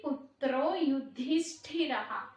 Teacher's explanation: అక్కడ ధి అనేది ష్ఠి అనేది రెండు మహాప్రాణ అక్షరాలండి, స్ట్రెస్ ఇస్తూ చదవాలి